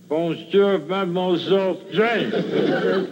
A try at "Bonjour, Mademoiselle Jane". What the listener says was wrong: That's very good. Except for the mwah. Huh? Must be soft.